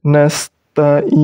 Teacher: Ain harus jelas, tak boleh diganti huruf hamzah. Nasta'in. Jadi ainnya harus jelas.